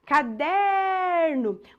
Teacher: a sílaba tônica desta palavra quando você chama a palavra caderno Qual que é a sílaba que se Estendeu é o der o der é a penúltima sílaba da palavra